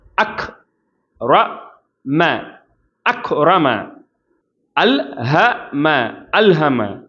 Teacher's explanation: கா ஹம்ஸ்உடைய வார்த்தை அக் அப்படின்னு சொல்லும்போது காற்று வெளிப்படும் ரா அப்படின்னு சொல்லும்போது உயர்த்தி உச்சரிக்கணும் ம அப்படின்னு சொல்லும்போது தாழ்த்தி உச்சரிக்கணும்